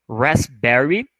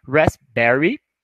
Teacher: é como se você quase não pronunciasse o P